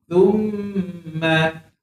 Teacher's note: keluar hujung lidah, jangan baca summa